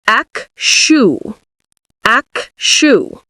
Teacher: It's the stress, ac. The second part, even though it's spelled with a TU, is pronounced like an SHU.